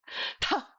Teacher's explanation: Really harsh, with a lot of air.